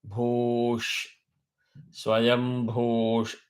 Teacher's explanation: So bhu two matra and visarga one matra. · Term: dirgham